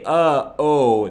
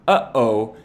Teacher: when i say uh oh that's just two different vowels but when i say uh-oh that's two vowels separated by a consonant or a glottal stop · And this one might be hard to understand or hard to kind of conceptualize how this is even a consonant, because this consonant might sound sort of just like not saying anything, because you just stop your vocal cords from vibrating. But this is the sound, the typical explanation of this sound is that it's the space in between the vowels in the word uh-oh.